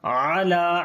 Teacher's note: عین کو گلے کے درمیان والے حصے سے پڑھیں گے, لام کو لمبا کریں گے, کھڑی زبر ہے.